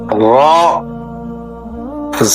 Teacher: র হরফটি জিহ্বার আগার পিঠ উপরের তালুতে লাগবে, মোটা হবে, বাংলা আকার প্রকাশ পাবে না।